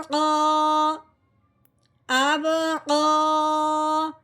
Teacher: قوف کے اوپر کھڑی زبر آنے کی وجہ سے قوف کو ایک الف کے برابر لمبا کرنا ہے